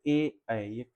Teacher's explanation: यानी कंठ तालव्य। मतलब ये कंठ और तालु दोनों से मिलाकर के बोले जाते हैं।